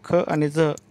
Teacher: ख आणि झ या अक्षरामध्ये ह च्या छटा आहेत त्यामुळे ते महाप्राण मध्ये मोडतात